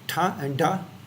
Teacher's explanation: you're using the tip or blade of the tongue and the gum ridge. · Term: dental plosive